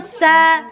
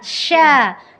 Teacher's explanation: Tetap ya, sa sama sya walaupun temenan, dia tapi beda makhraj. Yang satu di ujung lidah, yang satu di tengah lidah. Jadi bukan karena bunyinya itu bukan karena dengan memonjongkan bibir gitu.